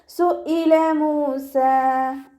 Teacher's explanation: ഹംസയുടെ മഖ്റജ് അഖ്സൽ ഹൽക്ക്, തൊണ്ടയുടെ അവസാന ഭാഗം. സൗണ്ട് യാ കെസ്റയായി പോവരുത്, സുഇല എന്നായി പോവരുത്.